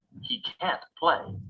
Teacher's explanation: the negative modal can't is always pronounced with a clear vowel sound